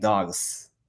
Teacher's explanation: with the Swedish accent I realized quite soon uh that they did not have a z sound